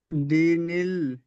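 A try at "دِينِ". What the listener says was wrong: বলেন, টান হয়নি। দি নীল।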